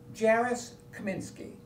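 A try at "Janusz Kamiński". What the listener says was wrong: Janusz Kaminski. Well, probably looked, you thought the N was an R.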